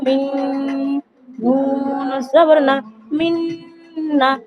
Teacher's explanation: নুনের উপর যেহেতু তাসদিদ রয়েছে, তাই এটা হচ্ছে ওয়াজিব গুণনা। এখানে নুন মুসাদ্দাদ, এটা ওয়াজিব গুণনা করতে হবে।